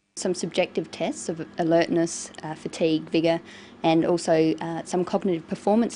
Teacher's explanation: someone to fall asleep so she uses a variety of intonation she uses rising and falling tones and a tone that's neither rising nor falling just a flat tone